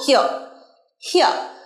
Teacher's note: হিয়ার আর থাকলেও শেষে আমরা আর উচ্চারণ করি না